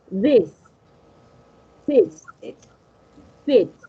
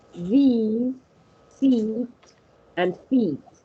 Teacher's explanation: You have the E in this and sit and sit, and then we have the long E in these, seat, and feet.